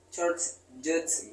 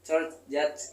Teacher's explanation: bunyi yang terjadi di dekat bagian yang keras dari langit-langit mulut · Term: palatal